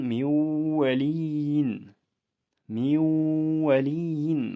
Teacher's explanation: vav harfida tashdid bo'lmasa ham vav harfiga o'tib vav harfi ikkita bo'lib o'qilib ketilyapti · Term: idg'om